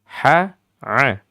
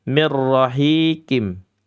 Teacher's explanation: Ha itu hurufnya huruf maudhi'ul halqi. Dia bagian al-wasatul halqi di tengah-tengah. Dia satu saudara dengan a.